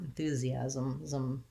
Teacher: So you would build it from, we would, instead of enthusiastic with stress on the A, you would have enthusiasm. You can use a little bit of a schwa between the Z and the M.